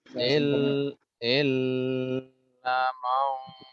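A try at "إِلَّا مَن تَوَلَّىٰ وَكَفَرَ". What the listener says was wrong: Ilnya nggak ditahan. Illa man tipis.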